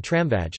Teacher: /m/ is labiodental [ɱ] before /f, ʋ/, as in tramvaj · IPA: [trǎɱʋaj]